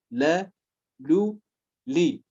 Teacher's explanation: Its articulation point, it is the front edges of the tongue, whereas the dad is from the posterior edges of the tongue. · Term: lam